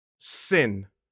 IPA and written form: sɪn (Sin)